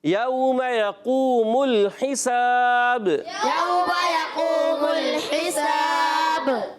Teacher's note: با میں کلکلا کرنا ہے, آخر میں قاف کو موٹا رکھنا ہے, حا کی ادائیگی, سین کی ادائیگی کلیئر